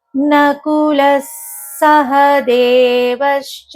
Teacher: ఆ విసర్గ వినిపించకుండా స కు స వత్తు పలికేటట్టుగా పలకాలి